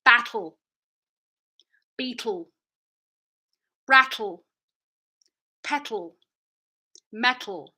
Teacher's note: So this lateral release, we never use this in North American English. I'm kind of creating a seal with my L, my tongue in the middle, and I have airflow on the sides of my tongue.